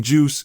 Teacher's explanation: The J in juice is an affricate, a fascinating sound that begins as a stop and releases as a fricative. Imagine it as the linguistic equivalent of popping bubble wrap, starting with pressure and ending with a satisfying release.